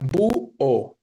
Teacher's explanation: Tenemos u, que es débil, pero está siendo tónica, y o, que es fuerte. Búho, ¿no? Entonces, suena fuerte en la U. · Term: hiato